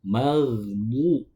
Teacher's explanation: keluarnya bo itu dari sisi lidah bertemu dengan gigi geraham, baik itu bagian kiri ataupun kanan, tetapi yang paling mudah itu gigi geraham bagian kiri. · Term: huruf bo